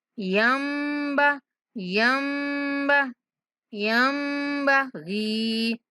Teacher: نون کی آواز غنہ کی شکل میں ادا کریں گے اور میم کی آواز کو پڑھیں گے